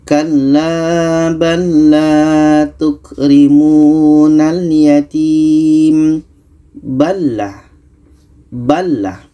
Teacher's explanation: Huruf pertama sukun atau mati, huruf yang kedua berbaris. Maka cara bacanya lam ini kita masukkan ke lam yang kedua. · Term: idgham mutamathilain